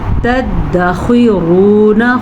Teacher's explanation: وما تدخرون، تدخرون، خو کو پر پڑھنا ہے آپ نے، خو حروف مستعلیہ میں ہے. را کو پر پڑھنا ہے کیونکہ را پہ پیش ہے